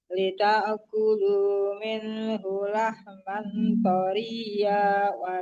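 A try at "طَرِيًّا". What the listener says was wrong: tanwin kan wajahnya tanwin ya ditanwinkan ke waw dan juga dengung ya. Jangan taria, kalau taria itu kalau kita berwakaf baru taria. Itu kan barisnya dua itu. Lahman yang dan berdengung ya, Bu.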